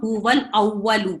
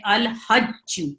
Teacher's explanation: ان میں لام کو اظہار کے ساتھ پڑھا جاتا ہے، یعنی لام کو پڑھا جاتا ہے